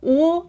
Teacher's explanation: with the ooh your mouth is really almost close there's just this tiny little hole and it sounds a little bit deeper